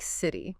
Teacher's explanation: When a T sound comes between two vowel sounds, it often softens. It sounds less like a sharp t and more like a soft d or even sometimes a quick r sound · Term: flap T